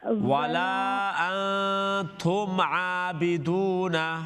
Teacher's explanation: میم ساکن کے بعد عین ہے، یہاں پر اظہار ہے، میم ساکن اظہار، غنہ نہیں ہے